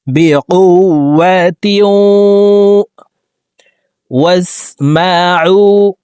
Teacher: তানউইনের পরে ইদগামে বা গুনার 4 হরফের একটি হরফ ওয়াও আসছে, এই কারণে এই তানউইন ওয়ালা তাটি অর্থাৎ দুই জের ওয়ালা তাটি তাসদীদ ওয়ালা ওয়ার সাথে গুন্নার সহিত মিলাইয়া পড়তে হবে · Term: ইদগামে বা গুন্না